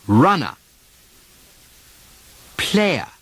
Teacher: when the letter R follows a vowel sound, the R simply disappears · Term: English R drop